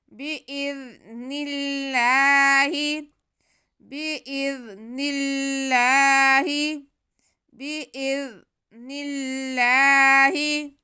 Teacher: آگے نون کے نیچے زیر ہے اور آگے اس میں جلالت اللہ آ رہا ہے. اس میں جلالت اللہ سے پہلے زیر ہونے کی وجہ سے ہم اسے باریک پڑھیں گے